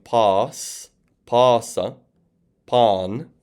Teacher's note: In particular, it would also indicate a rising and falling pitch, but I am not pronouncing that. So I'm just pronouncing it as a long alpha, since a circumflex guarantees that a vowel is long.